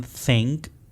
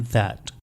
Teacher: उसके बाद dental sounds जो टीथ के साथ और टंग के साथ प्रोड्यूस होते हैं। आपका tip of द tongue teeth को टच करता है और फ्रिक्शन से साउंड प्रोड्यूस होगी